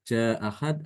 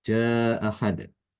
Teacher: Ada yang membaca dengan bacaan pendek, ja'ahad, atau dibaca dengan tawasud atau empat harokat, ja'ahad. Maka di sini dikatakan yang lebih diutamakan adalah yang dibaca pendek.